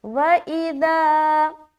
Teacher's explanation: ذال کی ادائیگی نرمی کے ساتھ بغیر سیٹی کے کرنا ہے۔ وَإِذَا کھینچتے ہوئے ایک الف کی مقدار لمبا کریں گے، کیونکہ یہاں پر دیکھیں الف خالی ہے اور اس سے پہلے زبر آ گیا۔